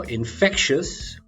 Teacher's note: infectious stress on the middle syllable